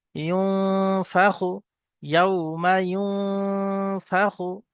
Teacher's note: নুন সাকিনের পরে একফার 15টি অক্ষরের মধ্যে থেকে এখানে ফা এসছে, তাই নুন সাকিনের আওয়াজকে নাকে তুলে একালি পরিমাণ গুণনা করে পড়তে হবে, একে একফা বলে।